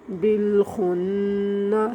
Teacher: یہ نون مشدد ہے اور نون مشدد میں ہمیشہ غنہ کیا جائے گا